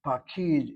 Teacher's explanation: The kamatz is accented or one place removed from the accent. Pakid has 2 syllables. The accent is on the last syllable.